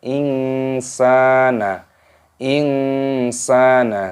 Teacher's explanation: Nun sukun bertemu dengan huruf sin. Ini hukumnya dibaca ikhfa. Disamarkan, dibaca ing itu namanya samar.